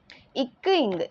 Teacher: நாவினோட முதற் பகுதி. அன்னத்தின் அடிப்பகுதியை வந்து பொருந்துவதால் வந்து இந்த மெய்ெழுத்துக்கள் வந்து பிறக்குது